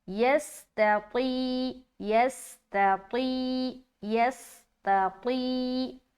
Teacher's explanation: جب طا کو یا سے ملائیں گے تو یا مدہ کریں گے تو موٹے طریقے سے کھینچنا ہے